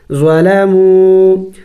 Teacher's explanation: ضا زبر ضا لام زبر لا میم و پیش مو ظلموا واو مدہ ہے ایک الف کا مقدار کھینچیں گے